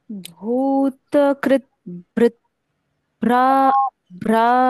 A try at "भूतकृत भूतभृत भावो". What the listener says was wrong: यहाँ पढ़ना कैसे है? भूतकृत भूत, त का उच्चारण पूर्ण, फिर क्री, क के साथ रू की मात्रा, क्री, क्री के बाद आधा द। भूतकृत, फिर भूतभृत, फिर से भूत। यहाँ आप देख रहे हो क्रो के बाद आधा द है और भू पूरा है।